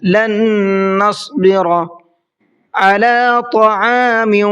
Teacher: طا کو منہ بھر کے پڑھنا ہے